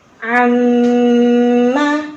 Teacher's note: Makanya kalau nun dan mim nama udah pasti masuk ke hidung dan itu harus masuk ke hidung. Tahan 3 harokat masuk ke hidung. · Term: gunnah musyaddadah